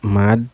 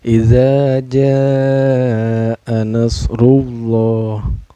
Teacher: cara bacanya dipanjangkan Boleh 4 harkat dan juga boleh 5 harkatnya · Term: madu wajib muttasil